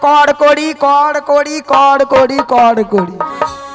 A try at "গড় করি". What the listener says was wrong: অবস্থা দেখো বলে কড় করি উচ্চারণ হচ্ছে না আরে মাসি কড় করি নয় বলো গড় করি